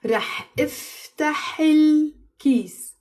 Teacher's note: I wouldn't say رح افتح and then pause and then say الكيس. I say it with a liaison.